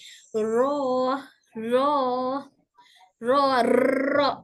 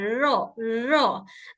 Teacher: से होता है जब जबान ऊपर के गम से लगती है र बोलकर महसूस करें कि जुबान का आगे का हिस्सा हल्का से हिल रहा है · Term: हल्का वाइब्रेशन